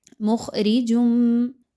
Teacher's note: مخرجم، خا موٹا حرف ہے، خوب موٹا کر کے پڑھیے، باریک نہیں پڑھنا، اور راہ کے نیچے چونکہ زیر ہے اس لیے اس را کو باریک پڑھیں گے۔ مخرجم، تنوین جو ہے وہ جیم کے اوپر موجود ہے دو پیش کی، اور اس کے بعد میم کا حرف آ رہا ہے۔